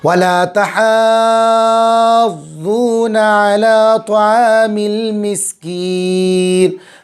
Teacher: ضاد پر تشدید ہے، مد لازم ہوگا، 5 الف کے برابر کھینچیں گے